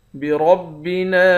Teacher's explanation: نون کے بعد الف ہے، الف حروف مدہ ہے، اس الف پر مد ہے، اس مد کو 3 الف کے مقدار کھینچ کر پڑھیں گے